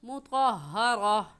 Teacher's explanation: गोल ता पर जब वक़्फ़ करते हैं तो वो हा बन जाती है, इसलिए इसे मुतहहरा नहीं कहेंगे बल्कि मुतहहरा।